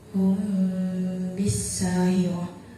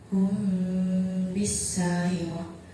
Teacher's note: Di situ ada mim mati bertemu dengan huruf ba, maka cara bacanya samar. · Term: ikhfa syafawi